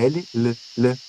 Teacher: Nós temos também sons laterais, que é o L, L, L. O ar passa pelas laterais da língua ali